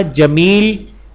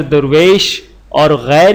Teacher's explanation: جمیل کی یا معروف مگر درویش اور غیر کی یا مجہول